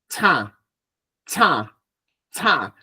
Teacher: El aire sale por la boca y por la nariz. Cha. Cha es nasal.